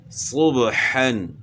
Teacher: یہاں بھی با ہے تو با حروف قلقلہ میں سے اس کو ہلا کر پڑھنا ہے